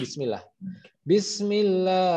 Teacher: Aslinya kan bismillahi, tapi hi-nya itu disukunkan gara-gara diberhentikan bismillah. Jadi mad alif disukun yang seperti itu.